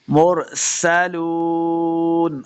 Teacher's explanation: मुरसलून, आखिर में वक़फ़ करेंगे, लाम पेश वाव, लू, वाव मद्दा है, इसको दो हरकत हमने लंबा करके पढ़ना है